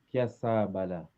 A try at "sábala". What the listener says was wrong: Cuidado da vogal longa, que é sábala.